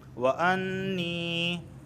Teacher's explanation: یہاں پر دیکھیں غنہ واقع ہو رہا ہے کیونکہ نون پر تشدید واقع ہوئی ہے